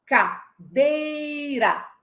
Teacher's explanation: Então, nós temos uma sílaba pré-tônica, átona, e uma pós-tônica, que é átona também. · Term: sílaba tônica